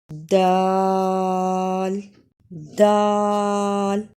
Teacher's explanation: زبان کی نوک ثنایا علیٰ کی جڑ سے لگے، یعنی زبان کا کنارہ سامنے اوپر کے 2 دانتوں کی جڑ سے لگے تو دال ادا ہوتا ہے